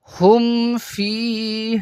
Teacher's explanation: اس میم پر گنہ نہیں کیا جائے گا بلکہ ظاہر کر کے پڑھا جائے گا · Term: اظہار شفوی